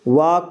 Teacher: दंतोष्ठ से वा का उच्चारण होगा दंतोष्ठ से